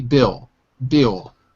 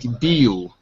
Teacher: So we don't say the L.